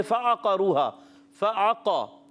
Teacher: یہاں فا عین قاف، یہ حرکات کو بغیر کھینچے بغیر جھٹکا دیے معروف ادا کرتے ہیں۔